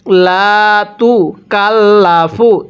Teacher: লা লামের মধ্যে এক আলিফ টান দিব জবরের পরে খালি আলিফ